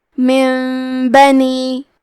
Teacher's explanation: با حروف القلب میں سے ہے، قلب کا معنی ہے بدل دینا، تو ہم نون ساکن کو ہلکی میم میں بدل کے اور غنہ کے ساتھ یہ حکم کو ادا کریں گے